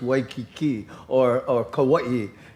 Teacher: The A and the I are like blended, and almost the I becomes almost a ghost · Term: diphthongs